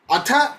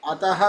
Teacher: ಅಥ ಅಲ್ಪ ಪ್ರಾಣ ಅಲ್ಲ, ಮಹಾಪ್ರಾಣ ಥಕಾರ. ಅತಃ ಅಲ್ಪ ಪ್ರಾಣ ತಕಾರ